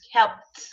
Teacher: There is no noise coming out of your mouth from the p sound. Go straight to t. Keep your mouth closed.